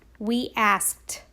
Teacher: Sometimes the suffix ed, remember I said it has different sounds. It can also sound like T, the T sound.